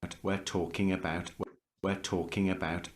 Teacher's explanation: So you see, the focus more is on talking, not are talking. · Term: de-stressed